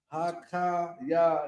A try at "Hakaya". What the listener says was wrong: Hakaya No, you too high. Hakaya Yayim.